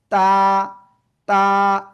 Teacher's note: জিহ্বার আগা, উপরের 2 দাঁতের গোড়ায় লাগাবেন। জিহ্বার আগা উপরের 2 দাঁতের গোড়ায় লাগাতে হবে, লাগিয়ে সিম্পল উচ্চারণ হবে তা, তা, একালিপ টান।